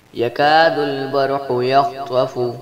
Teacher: یکاد البرق یخطف، قاف حروف مصالیہ ہے جس لیے قاف کو موٹا پڑھیں گے، خا بھی حروف مصالیہ ہے جس لیے خا کو بھی موٹا پڑھیں گے، اور طوا بھی حروف مصالیہ ہے جس لیے طوا کو بھی موٹا پڑھیں گے۔